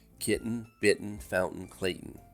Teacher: In general American English, the glottal stop in words like kitten is followed directly by the nasal N sound